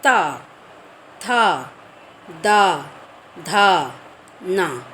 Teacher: हमारी जीभ है जो आगे के जो ऊपर के दांत हैं ना उसको छुआती है। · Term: दंतव्य